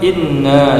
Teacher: In gunnah musyaddah, panjangnya 2 harokat, mendengung